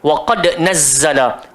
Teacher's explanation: Ada dekat situ huruf qalqalah, huruf dal. So dia adalah qalqalah sughra bila kita sambung.